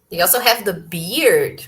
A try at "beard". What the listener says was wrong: Okay, guys, take care about the pronunciation. It's not a bird. Okay, bird, beard, bear, and beer. So they are very similar. So pay attention to this pronunciation, right?